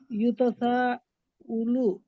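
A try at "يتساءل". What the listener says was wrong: अलू पढ़ो, युतसाअलु।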